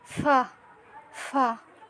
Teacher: উপরে 2 দাঁত নিচের ঠোঁটের পেটের সাথে হালকা করে লাগিয়ে, হালকা বাতাস যেন বের হয় এভাবে করে ফা।